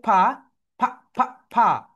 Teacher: উপরের দাঁত নিচের ঠোঁটের সঙ্গে টাচ করবে